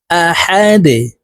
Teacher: ডাল যেহেতু কলকলার হরফ নিচের দিকে ধাবিত করে ধাক্কা দিয়ে উচ্চারণ করব